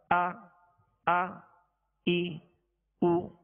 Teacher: حمزہ میں ویسے بھی اس میں سختی ہے، جھٹکا ہے، اور اس کو ضغطہ کے ساتھ یعنی جھٹکے کے ساتھ ادا کیا جاتا ہے